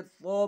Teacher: تا نہیں پڑھا بلکہ تو پڑھا، منہ بھر کر پڑھا، موٹی آواز کے اندر پڑھا، کیونکہ یہ حروف مستعلیہ میں سے ہے، یعنی حروف مستعلیہ 7 ہے جو ہمیشہ پور پڑھے جاتے ہیں، ان میں سے ایک حرف تو بھی ہے، اس لیے اس کو ہم پور پڑھتے ہیں۔